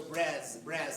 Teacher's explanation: So Brez, that's a sibilant, a voiced sibilant.